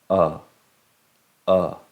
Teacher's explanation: el sonido de la vocal el sonido corto de la you el sonido corto de la you mayormente se pronuncia con una con una boca bien relajada en vez de con los labios redondos